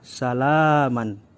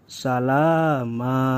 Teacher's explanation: kita tidak boleh membaca salaman karena berada di wakaf yg tepat berhenti maka dibacanya salama